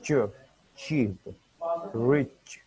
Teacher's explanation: Combine a brief stop with the fricative. हमने एक fricative को और एक स्टॉप को कंबाइन करना है. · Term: एप्लीकेटिव